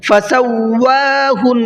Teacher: نون کے اوپر تشدید ہے، غنہ کریں گے